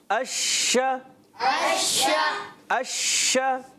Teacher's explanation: منہ میں آواز کا پھیل جانا اس کو کہتے ہیں صفت تفشی